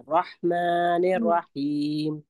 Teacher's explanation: رحمان اور رحیم دونوں میں را کے ساتھ ہا کو ملانا ہے ہمیں.